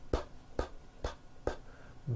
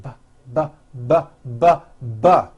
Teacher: They are produced exactly the same way here in your mouth, but the P sound has no voicing and the B sound, b, b, does have voicing. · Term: paired consonants